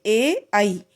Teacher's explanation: यानी कंठ से भी प्रयोग करेंगे और तालु से भी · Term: कंठ तालु